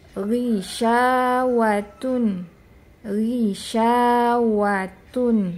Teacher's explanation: pada saat dia harakatnya kasroh ya tetap terasa tebal tapi tidak setebal pada saat dia harakatnya fathah maupun domah tapi masih ada berasa tebalnya dan juga jangan terlalu tebal seperti huruf-huruf idbaq ya. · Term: harokatnya kasroh